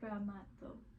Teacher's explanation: when you say the word bramato, you want to say it more with the T being at the teeth. So say a T like you would in English, just like a T sound.